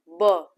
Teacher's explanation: दोनों ओठ हमारे आपस में चिपक रहे हैं, तो उससे क्या हो रहा है, ओष्ठ।